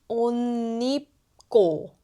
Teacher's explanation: 옷 changes to 온. 입 becomes 닙.